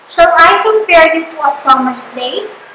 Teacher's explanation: So iambic pentameter consists of 5 iambic feet. So unaccented syllable is followed by an accented syllable. So since it consists of 5 iambic, it means that in one line we have 5 unaccented syllables and 5 accented syllables.